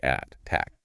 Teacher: >> Same with the word attack. The stress is on tack, so it stays a crisp, sharp T.